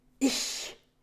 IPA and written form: ɪç (Ich)